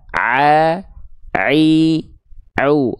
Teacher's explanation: huruf Ain itu dilafalkan bersama ha kecil dari bagian tengah tenggorokan